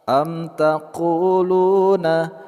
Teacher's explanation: qu, panjang dua harakat, lu, juga panjang dua harakat. Inna Ibrahima, nun bertasjid kita ghunnahkan atau kita dengungkan.